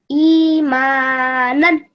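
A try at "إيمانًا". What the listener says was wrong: Good, but you don't say none. You have to make it a little bit longer, okay? None.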